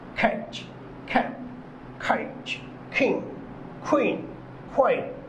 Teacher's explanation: এরপরে খ এই সাউন্ডের উচ্চারণ হবে জিহ্বার পিছনের অংশ উপরে নরম তালুর সাথে স্পর্শ করে বলতে হবে